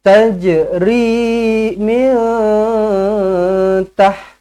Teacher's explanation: nun kosong bertemu dengan ta, ikhfa hakiki, dengungkan 2 harakat, ikhfa hakiki. Lidah jangan sampai naik ke langit. Jangan sampai bersentuhan. Biarkan dia terapung di tengah-tengah.